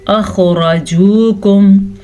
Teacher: را کو پر پڑا کیونکہ را کے اوپر زبر ہے